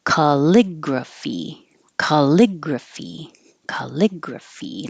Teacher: And it's 4 syllables. Stress on the second syllable.